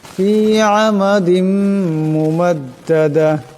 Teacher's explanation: দালের উপর 2 জেরের তনবিন, এরপর মিম আসছে, ঈদগাম হয়ে যাবে, ঈদগামের একারে পরিমাণ গুণনা করিয়া পড়তে হবে।